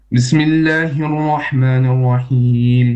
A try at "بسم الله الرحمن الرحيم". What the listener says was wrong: You have a little bit of extra ghunna on your Rahmanir Rahim. Yeah? You have to isolate the noon and the ghunna.